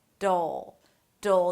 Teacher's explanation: we have a flap T, that sounds like a D and a dark L - "d'l", "d'l".